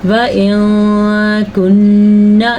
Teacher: نون پہ آپ نے غنہ کرنا ہے اور شد بھی ادا کرنی ہے